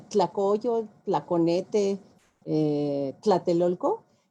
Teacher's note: tenemos un fonema, el tl, el del tlacoyo, el tlaconete, tlatelolco, que no tienen el resto de los dialectos. Ese es un fonema o un sonido que nos heredó el náhuatl, ¿no?